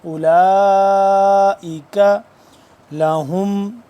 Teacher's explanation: 4 سے 5 الف کے برابر اس مد کو لمبا کریں گے